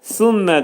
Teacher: Sonra gəlir bizdə Sümmə də sə hərfi pəltək hərfdir. Sənin məxrəci dilimiz xəfif şəkildə iki dişin arasına girəcək və pəltək sə hərfini demək lazımdır. Sümmə mim hərfinin demək idğam mə'al gunnə olacaq.